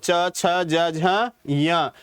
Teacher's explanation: तालू से बोले जाते हैं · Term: तालव्य